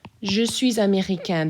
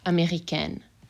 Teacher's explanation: a feminine person then i'm going to add an e and if i add an e then my n gets pronounced